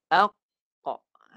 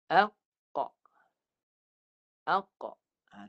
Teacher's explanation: Tahan suara. Qaf ni suara dia pangkal lidah naik dan suara tahan dulu di pangkal lidah tu. Baru pantulkan balik.